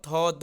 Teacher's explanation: थ द उच्चारण करके देखिए, जीभ जो है वो दांत में टच करती है, तो दंत हो जाएगा, दंत। तो थ द मतलब तवर्ग का जो होता है उच्चारण स्थान वो दंत होता है, तो बी इसका उत्तर हो जाएगा।